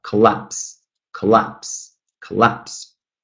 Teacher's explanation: 2 syllables, and the second one is stressed